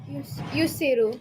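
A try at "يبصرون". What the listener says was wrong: Well, you said yus, which means you started with this guy. Yubsiru.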